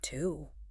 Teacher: My lips are pushing forward. They're rounding into a tight circle. The back of my tongue is lifting up toward the roof of my mouth. And my vocal cords feel tight like it requires deliberate muscular effort.